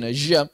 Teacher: orang orang Syam jimnya jadi syin